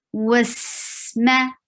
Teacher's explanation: Seen will get the safir. There is a whistle sound. It is light, and it will go on because it's rakhawa. Wasma, ma is short.